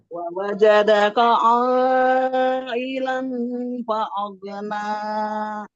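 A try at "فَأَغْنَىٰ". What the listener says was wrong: Fa'aghna. Pendek. 2 harokat. Fa'aghna.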